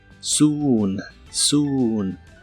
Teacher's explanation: la doble o se pronuncia como una u larga o doble